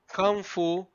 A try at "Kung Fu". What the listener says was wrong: you say Kang Fu like Kang. Kang. Kung Fu, sir. No, you said Kang Fu.